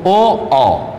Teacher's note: कंठ तालव्य है। कंठ ओष्ठ यानी कंठ के साथ साथ ओंठों की भी आकृति बन जाती है